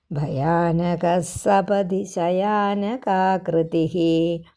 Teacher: ഭയാനക കഴിഞ്ഞ വിസർഗം ഉള്ളതുകൊണ്ട് സായ ഇരട്ടിച്ച് ഉച്ചരിക്കണം